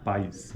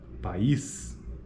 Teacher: pais é um ditongo enquanto que país é uma sequência de vogais